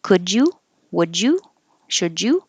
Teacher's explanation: And you can say all of these with a good U, and that's fine. You can say could you, making the D and the Y next to each other a J.